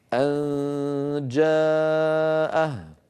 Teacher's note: فأنتقل من مخرج الهمزة إلى مخرج الجيم من غير إغلاق له. أن جاء، أن جاء، يعني مهيأ على مخرج الجيم من غير ضغط.